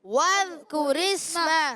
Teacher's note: وَذ، اچھا زال کو واو کو زال سے ملائیں گے، واو کو زال سے ملائیں گے مگر زال کو ہلائیں گے نہیں. بعض بچے بڑے وَاذْكُرِ اسْمَ، وَذ یہ غلط ہے، یہ نہیں پڑھنا. · را کے نیچے زیر آنے کی وجہ سے را باریک ہو جائے گی. را کو سین سے ملائیں گے، سین سیٹی کے ساتھ ادا ہوگا، باریک بھی رہے گا، ہلائیں گے نہیں. · کاف پر پیش ہے، ہونٹ گول ہو جائیں گے